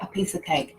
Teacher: that sound with ah and of is called the schwa sound and it sounds the same